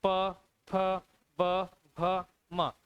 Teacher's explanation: इन सभी के उच्चारण में आपके होठों का प्रयोग होता है, इसलिए ये ओष्ठ ध्वनियां कहलाती हैं।